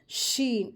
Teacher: شین کو ادا کرتے وقت سیٹی کی جیسی وائس آنی چاہیے